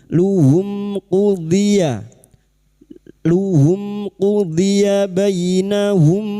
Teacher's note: “Rasuluhum”: mim sukun bertemu dengan qof, yaitu idhar syafawi. Mim sukun dibaca dengan jelas tanpa bersenandung.